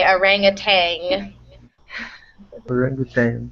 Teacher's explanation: in my dialect, we actually say it almost as if there's a G at the end. Many speakers will say orangutang.